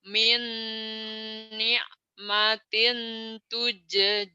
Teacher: Min, ni'matin minnya idgham bigunah. Min ditahan.